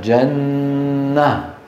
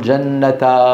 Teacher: يحذف التنوين ويوقف على هاء التأنيث بالسكون. نحو وشجرة نقف عليها وشجرة، جنة وجزاهم بما صبروا جنة نقف عليها جنة ولا نقول جنة.